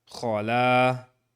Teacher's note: So it essentially, it's the same as all of these long vowels. It's the short fatha and an aleph next to it. And so it lengthens the lam. So we end up having kho and la.